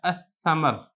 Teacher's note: اس میں ایک چیز آپ اور دیکھیں کہ شروع میں الف لام جب لگا ہے تو یہ حروف شمسیہ میں سے تھا، لہذا لام کو تلفظ نہیں ہوگا بلکہ اس کو پڑھے گا پڑھا جائے گا۔ حمزہ کو براہ راست آپ سا کے ساتھ ملا دیں گے، اور سا پر آپ نے تشدید بھی پڑھنی ہے